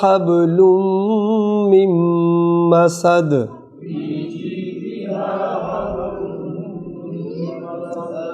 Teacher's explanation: نون ساکن کے بعد میم آ گئی تو نون نہیں پڑھی جائے گی، میم پڑھی جائے گی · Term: میم غنہ